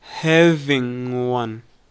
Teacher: The G at the end of having often weakens and it sounds like having.